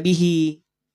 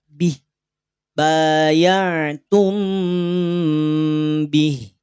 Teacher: Kasroh berdirinya berubah menjadi sukun. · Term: huruf ha sukun